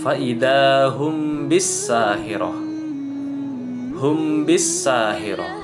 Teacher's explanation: mimnya itu jangan ditebalkan, tetapi tipis, sehingga terdengar seperti samar. Walaupun mungkin memang terdengarnya jelas, tetapi cara bacanya tetap kita samarkan. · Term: ikhfa syafawi